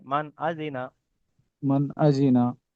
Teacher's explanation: নুন সাকিনের পরে হামজা এসছে, হামজা হচ্ছে হালকির 6টি অক্ষরের মধ্যে একটি, সেই জন্য নুন সাকিনকে জাহির করে পড়তে হবে। বিনা গণ্যায়, মানে গণ্য হবে না, নুন সাকিনকে বিনা বিনা গণ্যায় গণ্যে জাহির করে তাড়াতাড়ি পড়তে জাহির হবে।